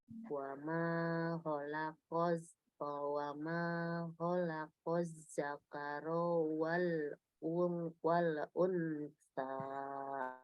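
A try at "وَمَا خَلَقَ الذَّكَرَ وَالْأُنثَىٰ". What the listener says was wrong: Zakaronya ronya 1 harokat. Wa ma khalaqaz zakara wal unsa.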